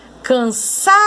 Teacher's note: a sílaba tônica de cansaço é a penúltima sílaba. Se a sa é a tônica, a mais forte, as outras duas são chamadas de sílabas átonas, as mais fracas.